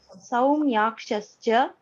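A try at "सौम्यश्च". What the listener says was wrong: No. Somyascha only, not Somyaschascha.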